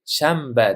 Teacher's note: aytilishda oson bo'lganligi uchun n demaymiz-u, m deymiz